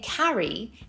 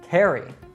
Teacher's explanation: Another common vowel change is the open ah sound in British English to an air in American English. This ah is the same in both variants in words like cat and map, but when the spelling is A-double-R, it is air in American English.